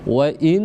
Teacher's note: Ketika nun ada tasdid atau syiddahnya, maka kita tekan selama 2 harakat di sana, karena hukumnya adalah wajibal gunnah.